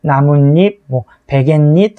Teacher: 사이시옷 뒤에 이 모음이 첨가되는 경우에는 니은, 니은으로 발음한다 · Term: 니은 첨가